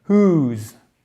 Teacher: Ensuite, alors, attention, là on ne prononce pas pardon, le W. On fait bien le H aspiré qui est le premier son qu'on prononce et ensemble on fait un OU long.